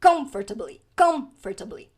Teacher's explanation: Primeira coisa é que a sílaba tônica é o com. Com, que é a sílaba forte dessa palavra.